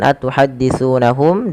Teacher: ditahan suara mimnya karena dia ikhfa syafawi